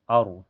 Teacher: Fil ar dan setelahnya ada ro sukun mutlak. Ini ro dibaca tebal ya